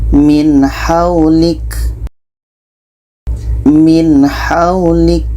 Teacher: Nun jelas ha jelas dan tidak ada dengung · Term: izhar halq